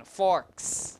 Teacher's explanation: the preceding sound of s is a voiceless sound so you have a voiceless ending which is s not C